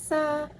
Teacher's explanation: Sa, konsonan geseran, apikopalatal, tak bersuara